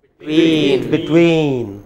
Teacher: the second part is stressed